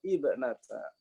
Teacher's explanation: kalau mulainya dari ibnata Imrana, ya, dibacanya dengan mentahqiq hamzah wasol